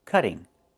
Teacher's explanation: Move the stress to the first syllable, cut.